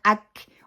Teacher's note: جب ہم اللہ اکبر پڑھیں گے، اکبر، اکبر کو فوراً حمزہ کو کاف کے ساتھ ملانا ہے